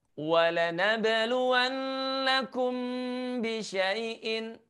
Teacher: Nah, selain nun bertanda tasydid, ada juga mim bertemu dengan huruf ba yang juga harus kita baca dengan cara mendengungkannya. Menahan suaranya selama 2 harokat.